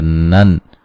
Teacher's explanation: नून तनवीन का इज़हार है, गुन्ना नहीं करेंगे